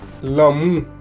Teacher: se produce una salida del aire por los costados de la boca.